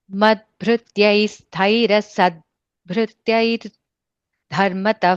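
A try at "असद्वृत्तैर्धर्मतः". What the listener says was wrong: And the vrittair, there's no ya sound there. Just it and atta. Vrittair. Madbhrityais taira sad vrittair.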